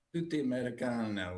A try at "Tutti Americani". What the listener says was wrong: has to end with an I. Everything ends with an I.